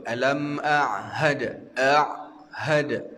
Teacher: Jangan sampai kita huruf ha tu tak terbunyi disebabkan kita nak bunyikan huruf kalimah tu.